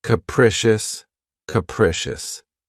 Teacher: this word has three syllables and the stress is on the second syllable keep in mind that the first syllable has that schah sound